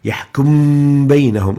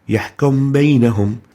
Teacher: So يحكم بينهم is wrong, but يحكم بينهم is right, because we applied Ikfaa. We didn't pressurize our lips pronouncing the Meem, so practically weakening the labial articulation of the Meem while we maintain the Ghunna. Mib immediately moves towards the Ba.